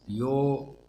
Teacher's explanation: यो दीर्घ है, ओकार दीर्घ है, दो मात्रिक है